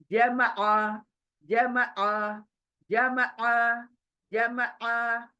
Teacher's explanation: मैं specially force डाल रही हूँ हलक के अंदर, क्यों? आइन की वजह से।